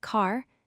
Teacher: In British English, when R appears at the end of a word like car, the R is silent. You simply say the vowel sound.